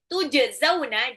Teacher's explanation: Tujzauna jimnya itu adalah qalqalah, pantulkan.